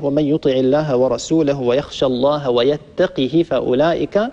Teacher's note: بكسر القاف وكسر الهاء من غير إشباع للهاء